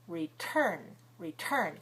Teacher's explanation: The stress is on the second syllable. The T is at the beginning of the stressed syllable.